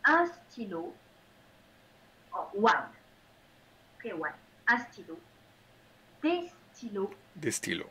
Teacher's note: So you don't hear the N of the name with an S. The S is silent. The plural is silent.